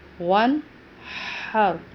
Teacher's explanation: ہم نے اس کو ون نہیں کرنا، آواز پہ دباؤ نہیں دینا۔ ون ہر، ہا کا تلفظ کا خیال کرنا ہے کہ یہ حلق سے ادا ہوگا، رو پر پڑھا جائے گا یعنی موٹی آواز نکال جائے گی، اور پچھلے والے حرف ہا کے ساتھ ملا کے پڑھا جائے گا۔